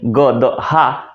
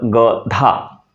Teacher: गदहा और गधा, ये अल्प प्राण और दीर्घ प्राण का ये फर्क हो गया है